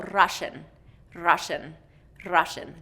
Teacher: Okay, so, many of our Russian students will roll or tap their R, so Russian, Russian, Russian, that tongue tip is coming up, and rolling or tapping on the roof of the mouth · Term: tapped or rolled R